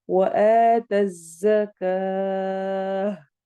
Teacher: मसलन अगर मैं रुक नहीं रही तो मैं पढ़ूंगी वआता ज़काता वल, लेकिन अगर मैं यहाँ पे स्टॉप करूंगी तो ता की आवाज हा में बदल जाती है। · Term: ताई मरबूता